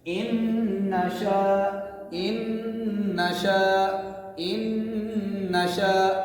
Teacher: زبر کو نہیں کھینچا ہم نے, صرف غنہ کیا ہے الف کے برابر